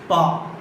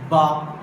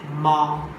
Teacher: Articulated by the lower lip touching the upper lip. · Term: bilabial